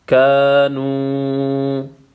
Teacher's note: الف مدہ ہے، ایک الف کے مقدار کھینچنا ہے، واو مدہ ہے، اس کو بھی ایک الف کے مقدار کھینچنا ہے۔